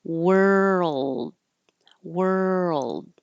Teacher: So were, like where were you, and then keep your tongue moving to the front from your R position to the L and keep making sound